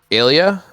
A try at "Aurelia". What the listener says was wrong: No, I don't know how to pronounce it. It's Aurelia, I think. There's an R. Yeah, Aurelia.